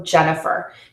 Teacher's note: Jen is the stressed syllable in that word so it's loud long and high and that is the longest vowel in the in my name